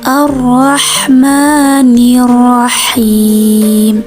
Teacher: dan masih di ayat 3 kesalahan yang sering ditemukan itu pada huruf Ha ini keluarnya dari tengah tenggorokan · H ini keluarnya dari tengah tenggorokan.